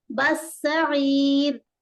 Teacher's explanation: کو سین میں ملائیں گے، بس سعیر، بس سعیر ہے نا، سین واضح اور مشدد بھی واضح ہوگا، ڈبل آواز